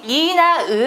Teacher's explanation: 예, 위, 외가 원순 모음이고요. 나머지 이나 으 같은 경우는 입술이 비교적 평평하게 펴지는 거죠. 이런 애들이 평순 모음이라고 합니다.